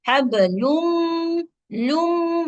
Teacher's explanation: लाम की पेश में होंठ गोल, फिर होंठों की गोलाई खत्म